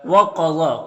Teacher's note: قاف اور ضا دونوں حروف مستعلیہ میں سے پر پڑھیں گے، اور کھڑا زبر ایک الف کے برابر کھینچیں گے، یا میں کوئی حرکت نہیں ہے، اس کو نہیں پڑھنا۔